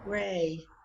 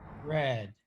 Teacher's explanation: you see that gray feels kind of tense and red feels kind of relaxed